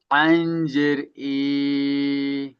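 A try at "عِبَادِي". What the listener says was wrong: ই টান হচ্ছে কেন? আইন জের ই, বলে বলেন।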